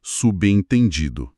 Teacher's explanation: Se um prefixo como sub é seguido por uma vogal, como em subentendido, a consoante B se junta à sílaba seguinte